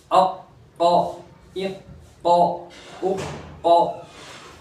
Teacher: حرف قلقلہ میں سے قاف آیا، اور حرف مستعلیہ میں سے بھی پور بھی کریں گے اور جماؤں کے ساتھ پڑھیں گے